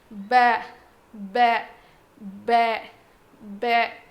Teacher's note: با جو ہے دونوں ہونٹوں کے گیلے حصے سے ادا ہوتا ہے. مطلب ہمارے جو ہونٹ ہیں اس کا جو اندر کا حصہ ہے جو ہمیشہ گیلا رہتا ہے، ان دونوں کے ملنے سے، یعنی اوپر کا گیلا حصہ نیچے کا گیلا حصہ، وہ دو ہونٹوں کے جو دو گیلے حصے ملتے ہیں تو با ادا ہوتا ہے.